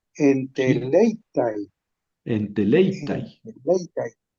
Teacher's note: el acento va sobre la épsilon, ¿no? sobre la Sobre la, épsilon.